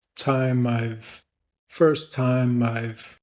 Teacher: we're going to link the M from time over to I've.